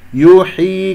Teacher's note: كسرة الحاء لا تختلس